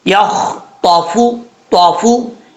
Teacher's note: فا کا مخرج ہے اوپر والے جو 2 دانت ہیں ان کا کنارہ نیچے والے ہونٹ کی تری والی جگہ پہ لگے گا تو فا پڑھا جائے گا